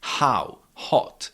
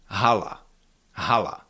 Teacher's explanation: in English, it's usually a rather soft and breathy sound like how, hot. H in Czech it is a little bit stronger and more voiced.